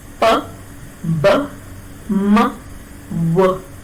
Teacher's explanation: The 2 lips come together to block the flow of air through the mouth, and such a sound is known as a bilabial. You know that labium refers to lip and bi means 2, so both the lips are the articulators.